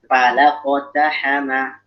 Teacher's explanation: Jadi kofnya tebal tapi fa'nya tipis gitu ya. Jadi kita mesti proporsional.